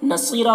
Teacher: صاد کو پر پڑھیں گے، حروف مستعلیہ میں سے ہے اور یا مدہ ہے ایک الف کے برابر کھینچیں گے